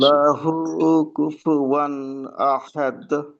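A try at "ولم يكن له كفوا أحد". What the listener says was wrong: আচ্ছা, এবার কিন্তু আরেকটা সমস্যা হলো, কুল্লাহু একটু লম্বা হয়ে গেল। কুল্লাহু, শেষের অংশটা।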